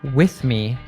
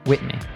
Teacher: he doesn't pronounce many th's